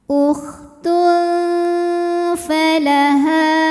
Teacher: hukum Ikfa a karena ada tanwin dammah menghadapi huruf Fa maka tanwin dibunyikan samar-samar siap-siap menuju Fa disertai dengungan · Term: ikhfa awsat